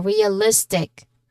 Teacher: So list is our stressed syllable realistic. Okay, the energy rises before right before the ending.